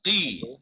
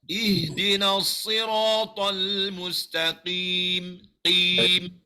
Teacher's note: Huruf qaf ni pangkal lidah. Angkat pangkal lidah. Qi. Mulut kena senyum.